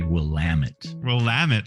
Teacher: you want to hit that second syllable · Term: emphasis